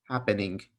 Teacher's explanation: So happening, this N is in the front of your mouth. And then the ing part, your tongue flies to the back of your mouth and you make a sound in the back of your mouth. So happening, and then you hit the G sound afterwards.